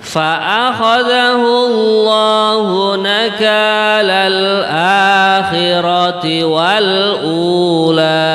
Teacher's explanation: lafadz akhirati, a-nya itu harokatnya kan berdiri. Nah itu kalau harokat berdiri dibaca panjang.